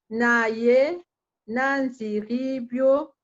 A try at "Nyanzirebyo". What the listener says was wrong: Vous avez tendance à mettre I à la place de E. Vous avez une tendance des anglophones. Les E, vous prononcez I. C'est E, c'est comme en Swahili. Naye, nyanzirebyo.